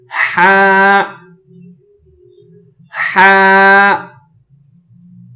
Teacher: حلق سے آواز نکالیں گے لیکن ساتھ میں سانس کی آواز، سانس بھی ہو، ہوا بھی ہو، ہوا بھی نکالیں گے، سانس بھی ہو، جیسے ہا ہا۔